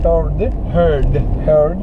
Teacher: not an American speaker because these D's at the end sound like T's